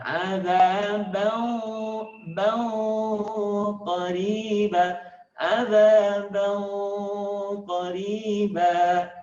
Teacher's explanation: Huruf qaf itu posisi makhrajnya di belakang huruf ka. Sehingga ketika nun mati tanwin bertemu dengan qaf, maka posisi lisannya terangkat ke belakang